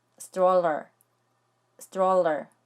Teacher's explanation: 이음절 단어인데 첫 번째 모음인 O에 강세가 있어요.